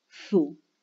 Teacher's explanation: Sientan cómo están sus labios cuando comienzan a decir su. Los labios ya adoptan la forma redondeada como para decir u, aún pronunciando s. Los dos sonidos juntos, es decir, lo que hacemos es coarticular.